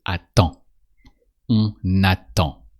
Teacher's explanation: you remove the dr sound at the end because here we are conjugating attendre, so we say attend.